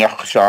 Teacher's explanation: यख्शा या खा हुरूफ मुस्तालिया है, मोटा पढ़ेंगे और सा पे खड़ा जबर है, 2 हरकत पढ़ेंगे, हा के मध्य असली है, यहाँ पे मध्य असली करके रोकेंगे।